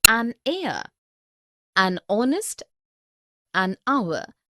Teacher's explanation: Also an air, an honest, an hour because the words air, honest and hour begin with a vowel sound as the initial consonant h is not pronounced